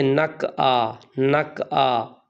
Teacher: کچھ لوگوں کو سنا وہ پڑھتے نک آ، نک آ، یعنی قاف کو کاف، باریک کاف بنا دیتے ہیں اور عین کو حمزہ کر دیتے ہیں